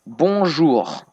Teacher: You say the R, it's like more when you clear your throat, like it's a bit like a cat purring.